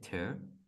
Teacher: So ter, the R is almost like W.